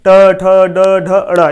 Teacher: इनको जब हम बोलते हैं तो हमारी जीभ मूर्धा में जाकर सटती है, ठीक है, ट ठ ड ढ अड़, इसलिए हम इसे क्या से कहेंगे, मूर्धन्य कहेंगे।